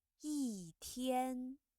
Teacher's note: When the character yi is followed by a word with the first, second, or third tone, you see yi changes to the fourth tone like this. Yi changed from first tone to the fourth tone.